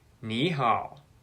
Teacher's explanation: However, in connected speech, the third tone is not the same. Two third tones in a row sound like a rising tone into a low tone. Ni hao. In this case, the rising tone is almost identical to the second tone. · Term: tone sandy